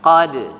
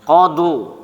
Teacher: Tipis pantulannya. Qad. Jangan qadu. Tapi qad.